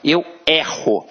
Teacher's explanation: observa que este e tem um som aberto